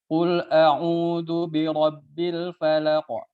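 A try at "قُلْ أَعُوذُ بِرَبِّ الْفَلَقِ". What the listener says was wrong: Qul a'udzu. Tipis hamzanya belum.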